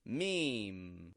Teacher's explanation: we just get me, and then we hold out an M, a nasal M sound on the ending.